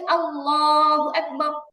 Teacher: আল্লাহ শব্দের লাম যখন মোটা করে বলবেন তখন জিহ্বার আগাটা দাঁতের আগায় লাগবে, এতটুকুই তফাৎ, আর কিছু না।